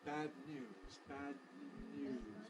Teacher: the tongue stays in place from D to n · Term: nasal release